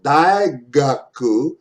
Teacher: when the g is in the middle of the word for example dai gaku its sound is very close to ng